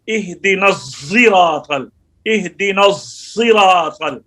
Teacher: امام حمزہ اس میں صاد میں کیسے پڑھتے ہیں, اہدنا الصراط اہدنا الصراط, صاد کے اندر زا کی کیفیت پیدا کرتے ہیں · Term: زا کی بو